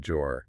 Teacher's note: You're letting your tongue sit back, kind of ready for the R, while you make a vowel that's roughly between a short E and a short A, maybe. Just a quick central sound.